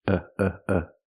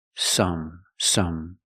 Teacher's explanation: the second syllable is a short sound it's closed